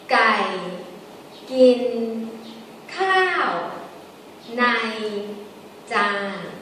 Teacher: Gai is low tone. Gin is normal tone. Khao is falling tone. Nai is normal tone. Jan is normal tone.